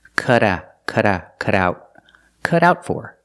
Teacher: t in cut is pronounced as a fast Da